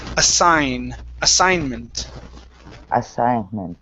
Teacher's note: this G is not going to sound